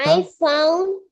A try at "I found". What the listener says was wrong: ফন্ট না, ফাউন্ড। I found a big purple flower.